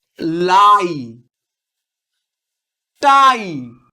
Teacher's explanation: দেখো এর মধ্যে দুটো ভাওয়েল সাউন্ড আছে, আ আবার ই। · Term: ডিপথং